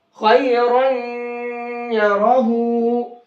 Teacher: तनवीन के अंदर जो नून की आवाज निकलती वो नून की आवाज नहीं निकलेगी बल्कि ये मिक्स हो जाएगा या के अंदर और या की आवाज निकलेगी · लेकिन इसमें नून की आवाज निकलती ना, नून की आवाज की जगह यहाँ पर गुन्ना करके पढ़ेंगे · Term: इदगाम माल गुन्ना